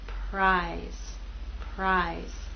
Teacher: p is voiceless you will not feel vibration here again R will begin without vibration and then you'll add your · R will begin without vibration, and then you'll add your voice as we move into I.